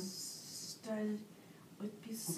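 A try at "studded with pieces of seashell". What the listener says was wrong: with. You missed the word with.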